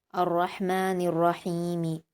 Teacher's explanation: ہا پر یا مدہ ہے، 2 حرکات کھینچ کر پڑھیں گے